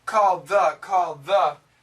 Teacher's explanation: we keep the L and we keep the th but actually there's not much of an ed